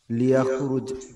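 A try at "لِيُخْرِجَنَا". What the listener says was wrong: লিইউখরিজানা, লিইউখরিজানা, নাটা আলাদা। লিইউখরিজা, তারপরে না, নাটা জমির, মানে আমাদেরকে।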